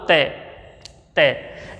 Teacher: जब हम त बोलते हैं तो हमारी जीभ की आगे वाली नोक या हमारी जीभ की जो नोक है वो तुरंत आगे ऊपर वाले दांतों को स्पर्श करती है